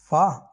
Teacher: फा बोलते हैं, फा, दोनों होठों का यूज हो रहा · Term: ओष्ठ